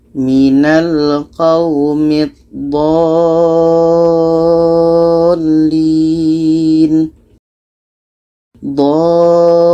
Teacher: Kita panjangkan 6 harakat baru masuk ke lam tasydidnya. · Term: mat lazim kilmi mutsaqqal